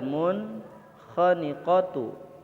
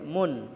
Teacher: Jadi bukan mung tapi mun, harus jelas, tidak boleh ditahan. Lihat, dibaca jelas dan tidak berdengung. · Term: izhar